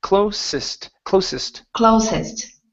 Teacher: give me an unvoiced S here